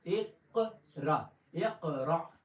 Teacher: اقرا میں جو قاف ہے وہ قلقلے والا ہے، اس کے اوپر آواز کو روک کے چھوڑیں گے، اقرا، اقرا، ٹھیک ہے، یہ قلقلہ ہے۔